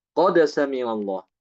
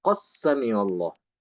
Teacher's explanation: Qad sami'allah. Ya, jadi dibaca dengan qalqalah. Adapun Imam Hisham tidak. Ya. Imam Hisham dia mengidghamkan dalnya ke dalam salah satu dari 8 huruf ini.